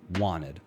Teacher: So we don't really hear the T, and the E sounds more like an I. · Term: weak form